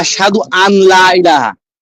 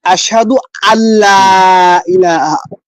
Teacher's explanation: অনেকে বলে এরকম যে আশহাদু আন লা ইলাহা, কিন্তু আনটা এই নুন সাকিনের পরে লাম আসছে, লাম ইদগামের হরফ, এখন এই হামজা লামের সাথে মিলবে, নুনটা বাদ হয়ে যাবে।